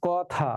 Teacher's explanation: ক অ যে ছিল এই অটা অই থাকবে, বিবৃতই থাকবে, এটা ও হবে না